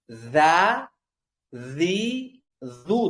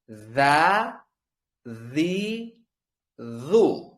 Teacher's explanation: Zal harfi til uchi yuqori tishlardan birozgina chiqishi orqali talaffuz qilinadi.